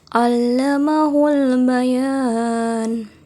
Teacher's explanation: alif lam qamariyah pada alba sehingga huruf lam dibaca jelas